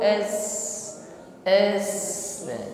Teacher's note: mengalir di sini Jadi selain nafas berhembus namun ada bunyi sirir nah bunyi desis ya mengalir es nah ini tidak dimiliki oleh huruf t